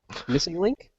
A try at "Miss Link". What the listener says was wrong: Miss Link. Not missing.